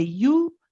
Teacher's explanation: uh the ya at the beginning this has a bomb so you've got to circle the lips for that one and you say you but you don't prolong this it's only one count